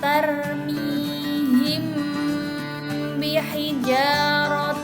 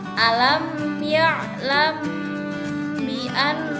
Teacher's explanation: Cara melafalkan Ikhfa Shafawi adalah dengan suara lembut di antara 'mim' dan 'ba ' pada bibir. Kemudian, tahan selama sekitar dua ketukan sambil menghasilkan suara Ikhfa dari rongga hidung.